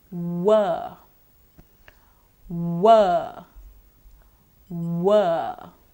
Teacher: the organs of speech used are both the lips so it's a my labial sound voiced bilabial semi wall now · there is partial closure or there isn't complete obstruction or blockage the air does come out of the mouth without obstruction or blockage but the mouth is not wide open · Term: semi vowel, semi-vowel